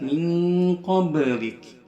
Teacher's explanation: Min ini lebih berdengung, dengungannya dominan daripada samarnya